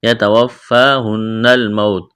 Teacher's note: یتوفاہن الموت، یہاں فا کے اوپر کڑا زبر ہے، الف کے برابر کھینچنا ہے، نون مشدد ہے، آواز ناک میں چھپائیں گے۔ موتو، واو ساکن سے پہلے زبر، واولین بغیر کھینچ کے پڑھنا ہے، یہاں بھی واولین ہے، بغیر کھینچ کے پڑھیں گے۔